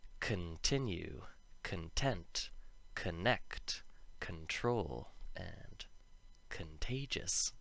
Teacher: c-o-n and the first syllable is not the one that's emphasized it'll make a sound very similar to khan but i think it's kun with the schwa sound